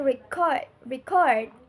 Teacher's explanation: when it's a verb, we say she wants to record record her speech with the stress on the second syllable